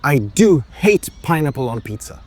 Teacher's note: Give the do a little extra oomph. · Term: do-emphasis